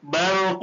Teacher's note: را ساکن سے پہلے زبر ہو تو را ساکن پور ہوگی